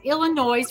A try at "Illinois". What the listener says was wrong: The S is silent.